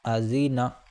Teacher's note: تو دیکھو یہاں پر زال آیا، اور زال جو ہے نرم اور باریک ہے، یعنی زبان کی نوک دانتوں سے باہر آئے گی تھوڑی سی جب ادا ہوگا، تو اس لیے ہم نے پڑھا ازینا نرمی کے ساتھ۔